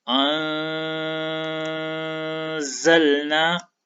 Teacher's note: تو اس کو ہم اس طرح پڑھیں گے: انزلنا۔ اب اس مثال میں نے نرم غنے کے ساتھ اخفا کیا، یعنی میں نے پورا غنہ نہیں کیا۔ اگر میں اس کو پورے غنے کے ساتھ پڑھتا تو یہ اس طرح پڑھا جاتا: انزلنا، جو کہ غلط ہوتا۔